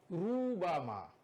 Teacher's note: Roh situ dia kena tebal kerana dia sendiri baris dhammah atau dia sendiri baris fathah atau dia mati sebelum dia huruf fathah atau dia mati sebelum dia huruf dhammah, dia kena tebal.